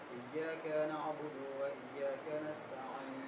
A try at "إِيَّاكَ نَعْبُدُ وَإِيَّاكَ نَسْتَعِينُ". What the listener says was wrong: इय्याक में थोड़ा सा खींचा, नहीं खींचे।